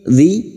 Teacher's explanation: Kasrah bertemu ya sukun 2 harokat kita panjangkan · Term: mad tabi'i